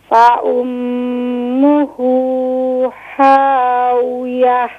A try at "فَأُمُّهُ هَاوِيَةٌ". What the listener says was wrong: Ha, pronounce the bottom of throat, please.